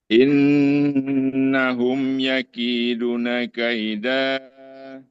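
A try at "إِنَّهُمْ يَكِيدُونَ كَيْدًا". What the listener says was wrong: Duknya panjang. Ustaz, kelewat.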